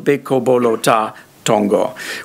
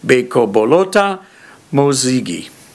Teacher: But if instead I put the noun, the object there, the rope, all of a sudden this high tone appears, which is an object marker, or object marking high tone, pitch, and you get beko bolota mozigi.